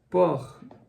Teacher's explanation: perceba que o r é o r da garganta